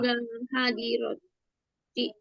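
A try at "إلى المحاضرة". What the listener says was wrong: Ilal muhadharati. Cuma mimnya nggak dibaca. Muhadharati.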